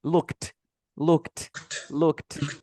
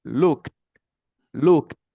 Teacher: sería como que boto aire, mira, looked, looked, looked. Boto aire sí o sí, porque el sonido de la T me hace que bote aire. El de la D me hace que me lo quede.